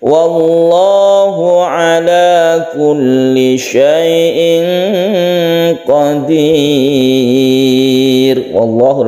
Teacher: lafaz Allah dibaca tebal karena sebelumnya ada fathah, maka disebut dengan tafkhim. Ala kulli syai'in qadir, kemudian ini tanwin bertemu dengan qaf, kita sebut dengan ikhfa.